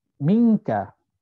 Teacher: dengung tapi dia hampir kepada izhar. Minka, seolah-olah pendengar sudah mengetahui kita nak sebut huruf kaf ataupun huruf qaf. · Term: ikhfa aqsa